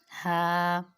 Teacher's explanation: ہا بھی حلق سے ادا ہوتا ہے اس لیے یہ بھی حروف حلقی میں ہے